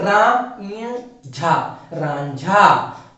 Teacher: तो इसीलिए इसका भी उच्चारण, अनुस्वार का उच्चारण अब ञ की तरह होगा, इसलिए रा ञ झा, रांझा।